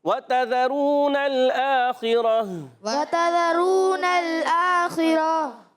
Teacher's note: واو کی ادائیگی ہونٹوں کی گولائی سے، ہونٹ گول ہو جائیں گے، واو پر زبر ہے، تا پر زبر ہے، زال پر زبر ہے، یہ حرکات ہے ساری، حرکات کو نہیں کھینچنا، ٹھیک ہے؟